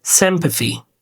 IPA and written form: ˈsɪmpəθi (Sympathy)